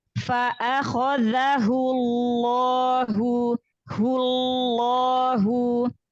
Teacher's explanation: Fa'akhadhahullahu, lafzul jalalah didahului oleh huruf yang berharokat dhammah, maka lamnya, lam pada lafzul jalalah dibaca tafkhim, dibaca tebal. Jadi tebalkan, angkat pangkal lidah.